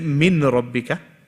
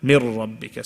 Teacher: No ghunnah. So we don't read it from the nose. Just shadda. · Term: idgham without ghunnah